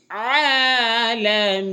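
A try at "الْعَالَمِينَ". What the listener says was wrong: চাপ দিতে হবে। আইনের মধ্যে চাপ দিতে হবে।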